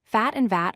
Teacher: Fat and VAT are two common words that differ only in voicing.